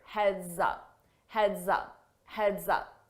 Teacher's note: So notice that S on heads, when I combine it with my vowel sound in up, I use a z, z to combine that together, and it sounds like one word.